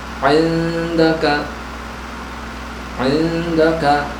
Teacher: cara bacanya dengan cara disamarkan dan dengung. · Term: ikhfa